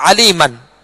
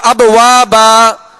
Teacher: اس کا طریقہ یہ ہے کہ آخری حرف پر علی من، میم کے اوپر دو زبر کی تنوین ہے تو الف سے بدل کر ایک الف کی مقدار میں کھینچ کر وقف کریں گے